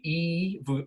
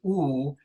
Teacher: of the tongue being kind of pushed forward a bit so if you say e versus ooh and you kind of oscillate between those two vowels your tongue is staying high but coming forward and back